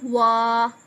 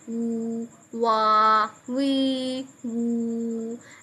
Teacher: होंठों की गोलाई से अदा करते हैं। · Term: वाव